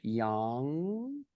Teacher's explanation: I like to say yang with the glottal stop